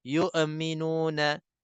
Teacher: Hamzah boleh diqalqalahkan, dilantunkan kesan sukunnya.